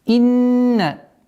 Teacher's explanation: Удвоение, назализация в размере 2 огласовок.